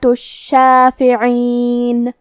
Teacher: لہذا ہمیں 2 حرف کے برابر شین کو پڑھنا ہے، کیونکہ تشدید کی اصلیت 2 حرف ہے. جیسا کہ یہاں حرف الشین ہے تو یہ 2 شین ہے، شین ساکن اور شین متحرک.